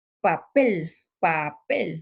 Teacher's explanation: Si yo pronuncio eh, el sonido de la letra P, de la grafía P, cómo es de que vamos a ver que para pronunciar eso voy a cerrar un momento mi cavidad bucal y luego, ¡fum!, como que va a haber una explosión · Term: oclusivas